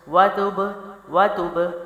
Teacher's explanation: جلدی سے نرمی سے قلقلہ، جلدی سے چھوڑنا